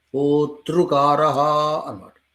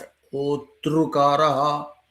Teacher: తకారానికి కాదు, రేఫకి అక్కడ ఊనికి అనమాట